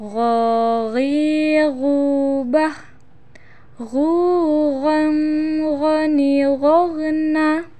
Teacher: harus terdengar menebal suaranya caranya pangkal lisan angkat ke belakang